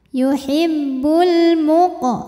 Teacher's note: alif lam menghadapi huruf qamariah yaitu mim maka lam dibaca jelas atau dinamakan dengan izhar qamari yuhibbul muq qofnya Qalqalah Sugra karena